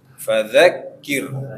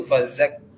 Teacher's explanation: dha, za itu bedanya za ujungnya saja yang nempel ke gigi atas. Kalau dha agak melebar dia.